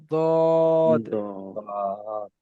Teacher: 7 নম্বর মাখরাজ হবে, জিভের কিনারা এবং তার বরাবর উপরের মাড়ির দাঁতের গোড়ার সাথে লাগিয়ে উচ্চারিত হয়